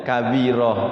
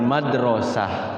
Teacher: ketika wakaf semuanya harus berbunyi huruf ha ha besar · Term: tak marbutoh